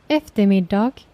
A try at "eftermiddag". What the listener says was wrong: Okay, this one I think no one pronounced it as eftermiddag. We say eftermiddag. Eftermiddag. We don't pronounce the G. Sometimes we just skip the last consonant. Just so this is eftermiddag.